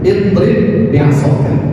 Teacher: Tapi pada konteks idgham mutamathilin, ba bertemu dengan ba, hukumnya adalah idgham mutamathilin, memasukkan huruf yang pertama kepada huruf yang kedua. Jadi sifat pada huruf ba yang pertama dipantulkan harusnya, tetapi dihilangkan.